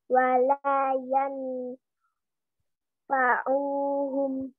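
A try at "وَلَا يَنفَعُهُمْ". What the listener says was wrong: Tapi ifa-nya di samarin.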